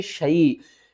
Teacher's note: وَلَا تَقُولَنَّ، آگے دیکھیں لِشَاءٍ ہم نے نہیں کرنا، ٹھیک ہے نا، اس کو پڑھیں گے شَیْءٍ، شین کو یا کے ساتھ ملا کر پڑھیں گے، الف کو درمیان میں نہیں پڑھیں گے۔